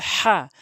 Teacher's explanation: সমস্ত প্রশংসা আল্লাহ তাআালার জন্য এই অর্থটি হবে। যখন আপনি হলকের মাঝখান থেকে উচ্চারণ করবেন